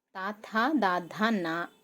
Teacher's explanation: అన్నిటికీ కూడా టీత్కి రిలేట్ అయి ఉంటాయి. సో అవి దంత్య స్పర్శ అనమాట.